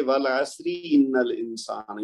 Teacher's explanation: क्योंकि उसके पहले वाला हरफ भी साकिन है और उससे पहले आयन के ऊपर जबर है। लेकिन अगर हम मिला के पढ़ेंगे तो फिर रा के नीचे जो जेर है तो उसको हम फिर बारीक पढ़ेंगे · इन्ना में नून मुशद्दद है, वो हम जानते हैं कि उसको जोर दे के डबल पढ़ेंगे। उसके बाद ये हमज़तुल वस्ल है अल इंसाना का, तो ये पढ़ा नहीं जाएगा, तो नून को हम लाम से मिला के पढ़ेंगे।